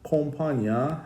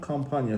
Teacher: Yəni o saiti dodaqlanan, A dodaqlanmayandır.